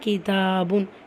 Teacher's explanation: கேஃப் கெஸ்ரா கி. தால அலிஃப் சகீரா இருக்குது. 2 ஹரக்கத்தளவு நீட்டம் கொடுத்து ஓதணும். புன் தன்வீன் இருக்கா, தன்வீனை தொடர்ந்து லெட்டர் மீம் இருக்குது.